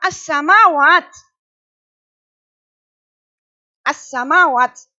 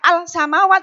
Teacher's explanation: Karena al bertemu dengan huruf sin. Ya, cara membacanya itu dilebur. Ya, tidak al samawat salah. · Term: idgham samsiyah